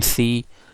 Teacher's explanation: behind their parties in C you are pronouncing this alveolar because your tongue tip or your tongue blade is touching at the alveolar Ridge